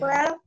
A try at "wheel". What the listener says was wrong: Wheel ya, bukan well, wheel.